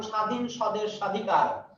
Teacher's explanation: শব্দের প্রথমে যদি ব যুক্ত হয় সে বয়ের উচ্চারণ নাই।